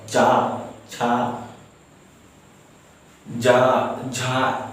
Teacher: चा बोलने से मेरा जीभ तालु में टकरा रहा है।